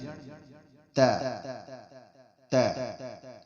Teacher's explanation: اسی طرح آگے ورڈ آتا ہے تا. تا جو ہماری زبان کی نوک ہے، یہ اوپر والے دونوں دان جنہیں ثنایا اولیہ کہتے ہیں اس کی جڑ میں ہے. تا تا.